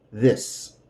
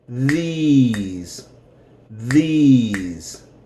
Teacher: When we talk about these, the E is going to be E. And the S is going to be Z. These. And it's going to be longer.